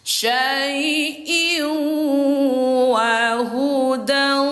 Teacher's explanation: Jadi suara tanwin ini kita lebur ke huruf wau. Jadi bacanya bukan lagi syaiin, bukan syaiin lagi bacanya tetapi syaiw. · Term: idgham